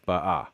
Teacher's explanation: ba'a with the stress on the final syllable